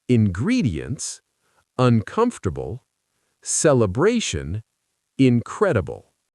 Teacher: Prefixes like un in uncomfortable aren't usually stressed.